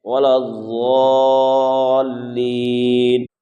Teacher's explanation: ضاد کا مخرج زبان کی کروٹ اور اوپر داڑھ یعنی مسوڑے سے مل کر ضاد ادا ہوتا ہے، اور دال کا مخرج زبان کی نوک اور اوپر سامنے کے دانتوں کی جڑ سے دال ادا ہوتا ہے، اس لیے دونوں کے مخرج کو درست کرنا ہے۔